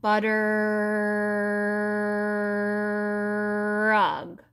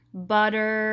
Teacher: just say the word butter with that long R at the end